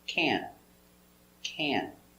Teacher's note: It's a little more closed and it's a little more nasal in your nose.